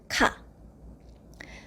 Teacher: So, ka is the most standard way, the basic sound, and then you make it a little bit more aspirated. I mean, you add a little bit more air and explosion, then it becomes ka.